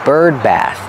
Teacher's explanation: the th makes a voiceless sound